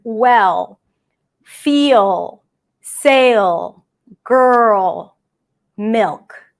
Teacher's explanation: the sound is created more in the back for the dark L, and that usually appears before a consonant or at the end of the word, like the word well, feel, sail, girl, milk. · But when it's at the end, it's actually a combination of an L and a W sound, okay? The back of the tongue goes up as if it goes up for a W sound